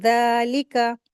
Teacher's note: ज़ालिका, लिका को जल्दी पढ़ेंगे। ज़ालिका, हुरूफ़ लिसविया है ज़ाल, सॉफ्टली पढ़ेंगे